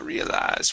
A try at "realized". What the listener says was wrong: instead of realized with the stress at the end here it is realized stress at the very beginning